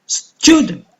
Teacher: so for student a stress is on the first syllable